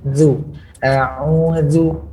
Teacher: huruf dzal keluar daripada ujung lidah